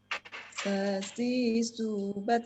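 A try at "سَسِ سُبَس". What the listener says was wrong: Bas. Bas. Loh, kok tak? Sukunnya kok tak? Jangan ditekan Bu lidahnya Bu, biar nggak muncul suara taknya. Bas. Bas. Ada nafas yang mengalir.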